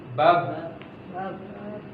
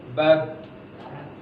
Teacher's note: 2 bibir itu bertemu, bibir atas dan bibir bawah. Bab. Ya.